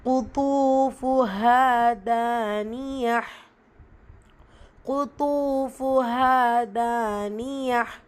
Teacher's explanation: இந்த இடத்துல அலிஃப் மத்தா 2 ஹரக்கத்தளவு நீட்டம் கொடுக்கணும். தானியா தால அலிஃப் மத்தா 2 ஹரக்கத்தளவு நீட்டம் கொடுக்கணும். வசனத்துடைய முடிவில் தாமா இருப்பா ஹாசாக்கினா முடிச்சு ஓதணும். · கஃப் வல்லின எழுத்து கூடவே தொம்மா வல்லின உச்சரிப்பு கொடுக்கணும்.